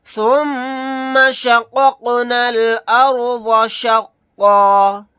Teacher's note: क़ाफ साकिन है, यहाँ पर कलकला करके पढ़ेंगे। · यहाँ पर राय साकिना को मोटा यानी पुर पढ़ेंगे क्योंकि इससे पहले जबर है।